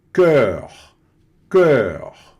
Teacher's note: Boca de O, som de E, certo?